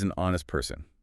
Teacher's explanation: Honest starts with the consonant H, but the H is completely silent. Exactly. Your mouth is making an ah vowel sound right out of the gate.